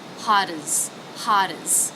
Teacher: when we can connect it to the next word so that's going to be a flap T